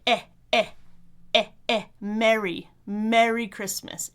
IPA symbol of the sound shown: ɛ